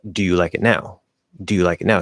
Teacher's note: i'm going to emphasize that ooh a little bit hit the u